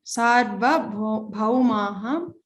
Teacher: don't stress on the ra, like sar, don't make that sound